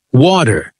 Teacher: check if your T softens to a D